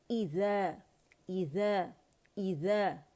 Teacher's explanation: और हमज़ा के को हमने ई साउंड के, ई साउंड होना चाहिए और ये अल्जॉफ से नहीं निकलेगी, ठीक है। ई देखिए, ई साउंड, वाइब्रेशंस कहाँ फील करने हैं आपने, फार थ्रोट पर